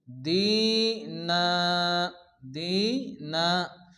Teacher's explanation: যদি আমরা এখানে থামি তাহলে নান হবে না, দুই জবরের জায়গায় এক জবর বাদ যাবে, আর এক জবরকে গণ্য করে এক আলিফ টেনে পড়তে হবে।